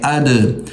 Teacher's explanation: दाल हुरूफ़ कलकला में से है और उस पर जज़म है तो हम इस पर कलकला करेंगे